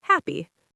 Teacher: in a statement like I am happy, the voice goes down.